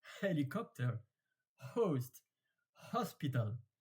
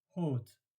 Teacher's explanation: And in French, you don't pronounce the H. So you only know because you read it.